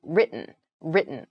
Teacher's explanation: it sounds more like a D sound almost so the T sound is very soft